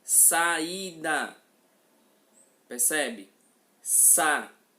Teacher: Eu tenho 3 sílabas e o A e o I pertencem a sílabas diferentes. Isso caracteriza um encontro vocálico chamado de hiato.